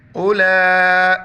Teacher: واو لکھا جاتا ہے پڑھا نہیں جاتا ہے اولا یہاں پر مد ہے 4 الف مقدار کھینچیں گے